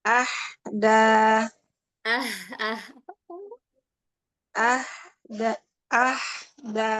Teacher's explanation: Untuk haknya ini hak yang pangkal tenggorokan, bukan hak yang tengah tenggorokan. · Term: H yang pangkal tenggorokan